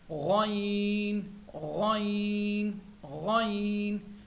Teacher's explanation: میرے عزیزو غائن جو ہے یہ بھی حروف حلقی ہیں، حلق سے ادا ہوتا ہے لیکن حلق کے اوپر والے حصے سے ادا ہوتا ہے، اور اس میں موٹائی بھی ہیں